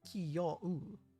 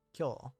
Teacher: However, because the yo is written smaller, you can merge the sound with the character before, in this case the ki.